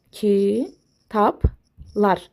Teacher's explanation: Kitablar tələffüzdə kitablar formasında tələffüz eləyirik. Yəni B özünün karşılığı P-ya çevrildi. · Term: kar qarşılığı